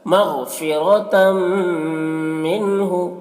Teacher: نون ساکن کے بعد حروف حلقے میں سے ہا ہے تو نون میں اظہار ہوگا۔